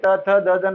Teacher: दंत्य यानी दांत, हम पढ़ेंगे त वर्ग पढ़ने वाले हैं, जब व्यंजन पढ़ेंगे तो त वर्ग आएगा तो उसको जब आप बोलोगे त थ द द न बोलोगे, आपकी जीवा दांतों को स्पर्श करेगी, इसीलिए इनको दंत्य कहा गया है